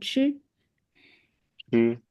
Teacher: For 知 and 吃, our tongue tip touches the hard palate and then open.